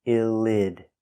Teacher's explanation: the T is pronounced with a D between vowels. Pronounce D, illid.